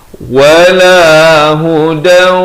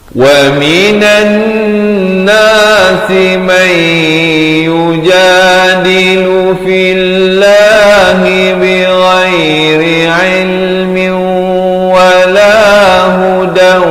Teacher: masuk berserta dengung lagi, tanwin bertemu waw